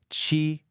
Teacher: It's not a smooth release. It's an explosion of air. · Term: aspiration